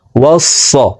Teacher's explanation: সদ হরফকে মোটা করে পড়ব। ওয়াস স, সিনের উচ্চারণ করা যাবে না।